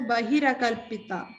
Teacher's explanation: when the visarga at the end of bahi, it combines with akalpita, it becomes a rakara, a repa.